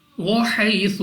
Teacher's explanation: یا ساکن سے پہلے زبر یا لین بغیر کھینچے بغیر جھٹکے دیے پڑھیں گے